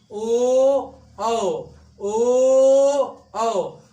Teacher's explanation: तो ओ क्या हो जाएगा भाई, कंठ तक भी जा रहा है और ओष्ठ भी आ रहा है, मतलब ओठ का भी प्रयोग हो रहा है। ओठ हमारे गोल हो जा रहे हैं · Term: वृत्ताकार स्वर